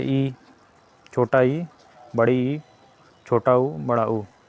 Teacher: वे स्वर जिनके उच्चारण में मुह बहुत कम खुलता है अर्थात लगभग बंद रहता है उसे समृत स्वर कहते हैं दोस्तों समृत स्वर वे होते हैं